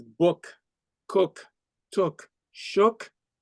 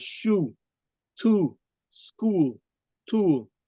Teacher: The vowel sound found in words such as book, cook, took, shook is often mistaken for the vowel sound found in words such as shoe, to, school, tool by Haitian Creole speakers. The first set of words is often pronounced as though it contains the vowel sound found in the second set of words.